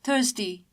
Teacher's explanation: R is silent in British pronunciation and that's why we say thirsty in British pronunciation